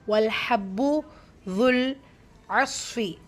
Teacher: வல் ஹா லைட்டாக ப்ரொனவுன்ஸ் பண்ணணும்